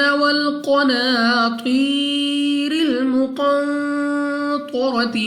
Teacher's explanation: قاف مستعلیہ میں سے ہے، موٹا پڑھیں گے یعنی منہ اور آواز کو کھول کر، اور تو پھر مستعلیہ میں سے را پر زبر، تو دونوں کو موٹا پڑھنا ہے.